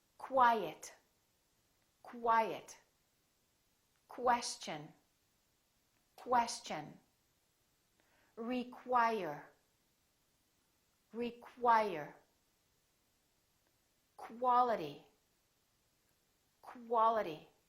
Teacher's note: When we have words that are spelled with Q-U, they're pronounced as KW. So there's a little W sound in here.